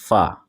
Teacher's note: ऊपर वाले दांतों के किनारे और निचले होठ के तर हिस्सा से अदा होता है। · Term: शफवी